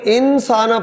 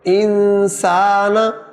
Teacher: نون ادا نہیں ہوگا بلکہ غنہ ادا ہوگا